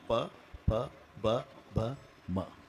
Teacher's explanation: मचा उच्चार वटाला ओठ लागल्याशिवाय होत नाही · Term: वष्टे